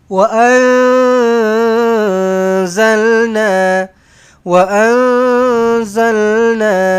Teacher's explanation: Nun kosong bertemu dengan zai. Kena samar-samarkan, kena dengungkan dia. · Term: ikhfa hakiki